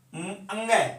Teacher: जैसे मान लो अपन बात करते हैं इसकी अंग, तो इसको उच्चारण स्थान देखो क वर्ग में आता है, का खा अंग है, तो इसका उच्चारण स्थान कंठ तो है ही, प्लस में क्या है? नासिका। ऐसे ही सभी पंचम वर्णों का उच्चारण स्थान ये तो है ही, इनके अलावा नासिका भी इनके साथ प्रयोग में होती है जब इनका उच्चारण करते हैं।